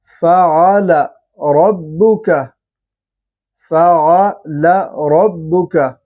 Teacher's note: را کے اوپر پھر زبر ہے تو را کو پر کر کے پڑھتے ہیں، اور را کے اندر صفت تقریر ہے تو اس پہ ہلکا سا اس کے اندر آپ دیکھیں گے فعل ربک، ربک، ربک، تو اس کو اس طرح سے ادا کریں گے۔